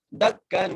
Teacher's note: دال کو کاف سے مضبوطی سے ملانا ہے اور کاف پر غنہ بھی کرنا ہے